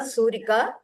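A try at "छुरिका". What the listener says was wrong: Not Surika, Churika. Churika. It is Chu. Churika. is Churika.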